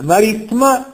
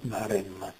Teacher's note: la seconda i si trova in sillaba post tonica quindi scompare